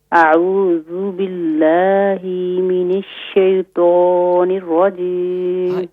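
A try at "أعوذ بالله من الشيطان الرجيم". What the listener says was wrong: یہاں جو باللہ ہی نہیں کریں، کھینچیں گے نہیں، بلکہ باللہ من الشیطان، من الشیطان الرجیم.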